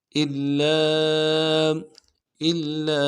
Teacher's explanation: حمزہ کو لام کے ساتھ ملانا ہے، لام کے اوپر تشدید زور دیں گے